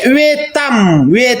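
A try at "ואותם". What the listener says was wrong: Salah, veotam. Ini veotam bukan vetam, bukan veotam nih ada yud di atas.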